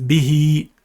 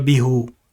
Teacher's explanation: So when it's attached to bi and a ha, it becomes bihi. If there's a kasra before the ha, it is read with an elongated sound.